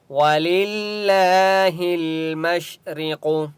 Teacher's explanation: قاف مستعلیہ میں سے ہے، اس لیے قاف کو موٹا پڑھیں گے